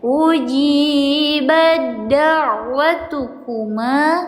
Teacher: Kodenya ya tak mati menghadapi huruf dal. Tidak dibaca ujibat, tapi dimasukkan, dileburkan ke huruf dannya. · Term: idgam